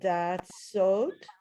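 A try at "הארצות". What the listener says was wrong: Okay, almost, but these are the two letters that we have that are very similar. Ratzot, it's a resh, not a dalid. The dalid is more squared off.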